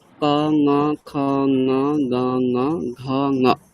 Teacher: ক যেখান থেকে হবে সেখান থেকে ঙ, ক ঙ খ ঙ গ ঙ ঘ ঙ, একই জায়গা থেকে উচ্চারণ হবে।